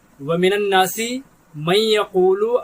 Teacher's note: جب نون ساکن کے آگے یا ہوتی ہے تو نون کو غنہ کر کے پڑھتے ہیں، نون کا تلفظ نہیں ہوتا